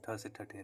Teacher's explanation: मूर्धन्य महाप्राण अघोष व्यंजन वर्ण का उदाहरण